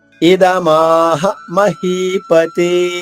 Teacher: ద కి రెట్టింపు సమయం మా పలకాలి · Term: దీర్ఘాక్షరం